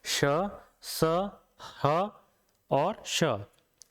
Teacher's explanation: ऊष्म व्यंजन वो व्यंजन है जिनके उच्चारण में हमारे मुंह से गर्म वायु निकलती है, और हमारे मुंह से जो वायु निकल रही है वो कहीं ना कहीं रगड़ खा के निकलती है। और ऐसा रगड़ खा के निकलने के कारण क्या होता है कि वायु जो हमारे मुंह से निकल रही है वो ऊष्म हो जाती है।